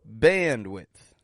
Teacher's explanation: notice how the an stretches out in band and bandwidth